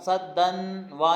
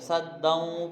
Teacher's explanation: صدا ومن خلفہم صدا، جی صدا نون تنوین کے بعد واو ہے، یہ ادغام ہو رہا ہے، کیا ہو رہا ہے؟ ادغام، صدن وا نہیں پڑھیں گے، صدوں پڑھیں گے